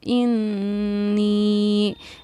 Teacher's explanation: نون پر تشدید ہے تو غنہ کیا